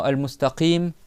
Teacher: Le Qaf, qui est au fond de la langue